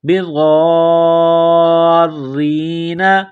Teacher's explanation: یہ لمبی مد ہے، 4 الف کے لمٹ میں کھینچنا ہے